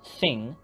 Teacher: stick your tongue between your teeth and blow the th and the sounds you get are interdental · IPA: θ